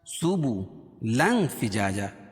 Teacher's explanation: کہ تنوین کے بعد حروف اخفاء کے 15 حرفوں میں سے فا ہے، اس میں ناک میں آواز کو چھپا کر پڑھیں گے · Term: اخفاء حقیقی